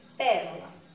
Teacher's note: é a antepenúltima sílaba pronunciada com mais intensidade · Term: proparoxítonas